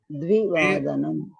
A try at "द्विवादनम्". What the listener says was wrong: द्वे नास्ति, द्विवादनम्।